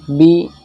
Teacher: زیر کو بالکل بھی نہیں کھینچا جائے گا